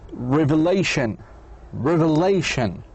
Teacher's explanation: Words and ending in shin, whether it was this one or this one, like television, also you put the stress on the penultimate